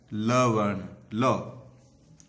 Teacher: उसके बाद में आता है पार्श्विक व्यंजन, जिनके उच्चारण में जिह्वा का अगला भाग, है ना, जीभ का अगला भाग मसूड़े को छूता है ना, वृक्ष, ध्यान रखना, और वायु पार्श्व के आसपास से निकल जाती है, अर्थात उनके अगल बगल होते हुए वायु निकल जाती है।